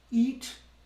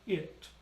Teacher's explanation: So a closed E vowel, closed I would be E. Open would be I, as in it.